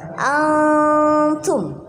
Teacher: antum nun sukun bertemu dengan ta itu hukum bacaannya ikhfa hakiki. Jadi dibaca samar.